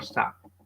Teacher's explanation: avoid adding an extra vowel at the beginning of group of the word